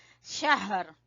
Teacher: ہا کو اقصی حلق سے نکالیں گے، گلے کے سب سے نیچے والے حصے سے